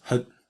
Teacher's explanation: So you can send something to somebody in various different ways, but if you send something to them by your grasp with this prefix hut, and it is hut, very short, schwa practically disappears, almost just becomes a voiceless vocalic thingy. This version of the word is to throw it to them, to send it to them by grasp.